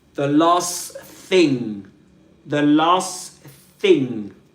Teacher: Usually the t the t sound gets dropped and we get the last thing.